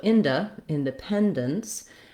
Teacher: It really doesn't matter too much on this syllable if I do a schwa or an I sound. In the word in, we're going to definitely use the I sound, because if I used a schwa, it would sound like undependence, which is a different, it's not a real word, but it would be a different word.